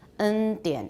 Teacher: Everybody says it with an alveolar articulation. 100%每个人都是 n 都是舌尖音 100%.